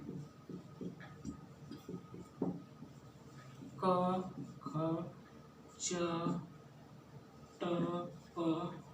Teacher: व्यंजन जो होता है वह जो स्वरों की सहायता से बोला जाता है। इसके उच्चारण में वायु जो है, जो अंदर की वायु आती है, वह जो है बाधित होती है। उसको बोलने में हमारे जीभ के द्वारा अवरोध पैदा किया जाता है।